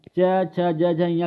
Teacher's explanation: च छ ज झ य क्या होती हैं तालव्य ध्वनियां होती है